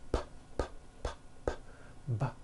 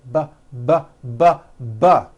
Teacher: So we say the P sound and the B sound are paired consonants. They are produced exactly the same way here in your mouth, but the P sound has no voicing and the B sound, b, b, does have voicing.